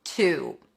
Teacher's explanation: you want to imagine as if you're adding a w at the end.